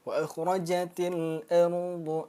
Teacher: Ru dia tafkhim tebal. Ra dan ru itu dia tafkhim tebal.